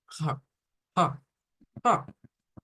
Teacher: Porque para nosotros la J normal es como ja, que es sí aspirado, más o menos le aproxima a la H aspirada, pero esa no es esa H. Es una H aspirada, pero con vibración.